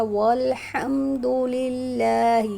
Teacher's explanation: تو اللہ تعالیٰ کا ساؤنڈ ہیوی ہو جائے گا، والحمد للہ، یہاں پر اللہ تعالیٰ کے نام سے پہلے زیر ہے تو یہاں اللہ تعالیٰ کے نام کو باریک پڑھیں گے